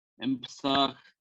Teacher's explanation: It would be M because of the P in Psah. It assimilates to an M.